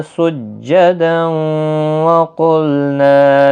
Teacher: سجداً، تشدید والے حرف کو سختی کے ساتھ پڑھیں تاکہ تشدید ظاہر ہو۔ تنوین کے بعد یرمل ان کا واو، ادغام مع الغنہ بھی یہاں پر ہوگا۔ قاف مستعلیہ ہے، پر پڑھا جائے گا، نا الف مدہ ہے، لا الف مدہ، دونوں کو ایک ایک الف کی مقدار کے برابر کھینچیں۔